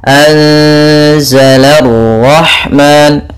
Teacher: anzala rahman, la tipis, ro-nya tebal.